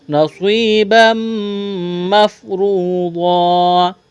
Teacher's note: تنوین کے بعد میم ہے، ادغام کریں گے، غنہ کریں گے، آواز ناک میں چھپائیں گے